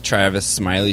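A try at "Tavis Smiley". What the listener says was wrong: Tavis, no R.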